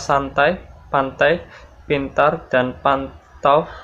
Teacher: Struktur bunyi NT di dalam kata santai, pantai, pintar, dan pantau sama-sama berfitur apikodental